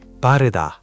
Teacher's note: The tense b gives it that punchy feeling.